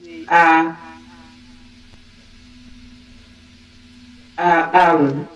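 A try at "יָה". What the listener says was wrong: Mais non, non, il faut prononcer le yod avant.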